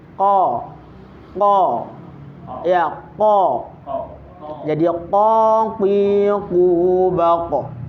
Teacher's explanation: tempat keluarnya huruf qof itu ada pada pangkal lidah dekat dengan anak lidah ya ee dengan langit-langit yang lurus di atasnya. Jadi pangkal lidah lurus dengan anak lidah.